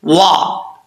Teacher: واو کو پڑھتے وقت ہونٹ گول کریں گے. اگر ہونٹ گول نہیں ہوگا تو سمجھ لیجئے کہ واو اپنے مخرج سے صحیح ادا نہیں ہوا.